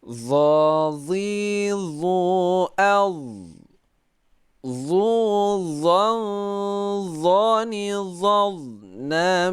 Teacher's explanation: Nanti akan kita lihat lidahnya ya. Yang diusahakan pokoknya tidak boleh mengeluarkan angin saat kita baca dha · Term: huruf dha